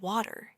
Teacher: You can notice how the T in a word like water can sound soft, almost like a D.